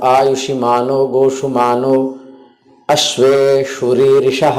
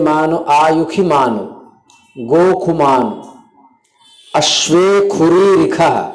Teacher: वैदिक मंत्र जब स्वर सहित बोलेंगे तो जहां भी मूर्धन्य शकार वहां ख का उच्चारण करेंगे